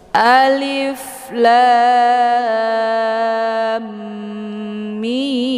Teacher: Jadi dibacanya panjangin la kemudian sertakan dengungan lam antara la dan mim di sini ada bentuk dengungan ya lebih kurang dua harakat kemudian baru mim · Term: idgham mimi